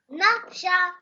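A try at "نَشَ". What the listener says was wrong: Why are you jerking it? You can't jerk it as well.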